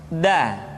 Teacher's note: Da diucapkan dengan menyentuhkan ujung lidah kita dengan bagian gusi-gusi dua gigi seri bagian atas. Da. Nah, kesalahan yang sering dilakukan adalah menyentuhkan ujung lidah dengan langit-langit.